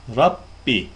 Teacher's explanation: fethalı olan ra kalın okunur